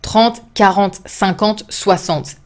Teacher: The final E is not pronounced and it's a nasal sound again.